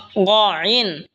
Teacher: গইন হলকের শেষ ভাগ হয়তো উচ্চারণ হবে গইন, গইন। এই খ যেখান থেকে উচ্চারণ হয়েছে সেখান থেকেই গইনও উচ্চারণ হবে।